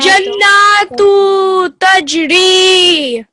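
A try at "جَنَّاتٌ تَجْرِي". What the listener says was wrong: So this here, we want to hear the tun. Can you hear that tanween? Jannatun.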